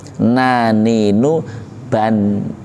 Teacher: Nun itu punggung ujung lidah menyentuh gusi. Sifat nun itu antara lain istifal, meringis.